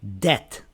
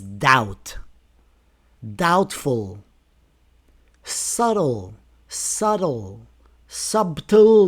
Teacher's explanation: the B is silent before T